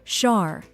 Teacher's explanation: This syllable is pronounced like the shar in shark, with a soft sh sound, followed by a short a, as in art.